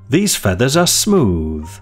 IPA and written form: ðiːz ˈfe.ðəz ə smuːð (These feathers are smooth)